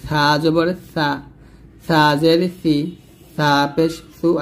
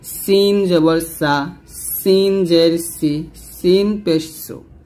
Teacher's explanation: সা লাগবে উপর দাঁতের আগায় আর সিন লাগবে নিচে দাঁতের মাঝখানে